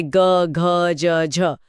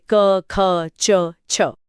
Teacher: जिन ध्वनियों को बोलते हुए गले में कंपन या गूंज होती है वो घोष है